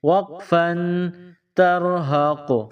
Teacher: وقف کی صورت میں آخر والے حرف کو سائلنٹ کریں گے۔ یہاں حروف قلقلہ یعنی قوف ہے تو ہم اس پر وقف کی صورت میں قلقلہ کریں گے